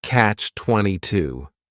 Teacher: It's a compound noun. The word catch is just one syllable and then 22 is three syllables and the stress is on that final syllable.